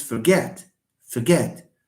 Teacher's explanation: not forget it's forget forget for is just a weak one forget get is the one that is stressed because it's a verb and because it has two syllables